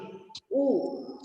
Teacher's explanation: এবং উচ্চ মধ্য, মানে উচ্চতেও আছে, মাঝখান থেকে উচ্চারণ করছি উ, উ বলতে গিয়ে বুঝতে পারছো যে মুখটা গোল হয়ে যাচ্ছে, পশ্চাৎ ওষ্ঠাধর এবং উচ্চ মধ্য ভাবে উচ্চারণ করছে।